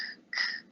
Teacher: almost like this k wanting to come out of my throat. But it doesn't come out because there's no vowel that carries it. So it just stays in the throat. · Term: k sound